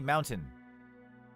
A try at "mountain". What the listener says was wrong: You don't stress the T.